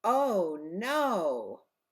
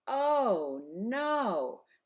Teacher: If you're very angry or upset, you hold out the vowel very long.